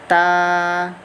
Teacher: Ta is tip tongue and gums of upper front 2 teeth